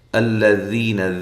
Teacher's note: گے۔ یہاں سے شروع کریں گے، الذین، ٹھیک ہے جی، الذین، ذی یا مدہ ہے، لام کو موٹا نہیں کرنا، نون کو لمبا نہیں کرنا